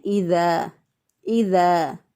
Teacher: ذال کو نرمی سے اور باریک ادا کرتے ہیں